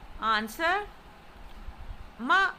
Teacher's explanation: ma means scold and carries the falling tone. The falling tone is also known as the fourth tone.